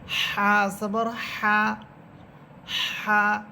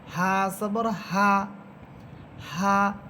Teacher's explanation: এই হা উচ্চারণের সময় শুধু হায়ের আওয়াজ হবে, বাতাসের কোনো শব্দ হবে না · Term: গোল হা